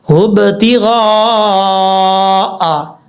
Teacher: غین حروف مستعلیہ میں سے پر پڑھا جائے گا، اور غین کے آگے الف ہے، الف کے اوپر مد ہے، اس مد کو مد متصل کہا جاتا ہے۔